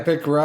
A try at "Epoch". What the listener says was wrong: I'm sure you say Epic, but it's Epoch. I was just putting the O in there.